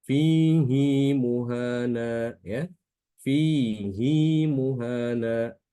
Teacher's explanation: Dipanjangkan dengan kadar dua harokat saja, tidak boleh lebih. Ya. Istilahnya qasar.